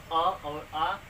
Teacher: जब आप अ बोलेंगे तो यहाँ पर कंठ का इस्तेमाल होता है, कंठ की सहायता से ही हम अ बोलते हैं।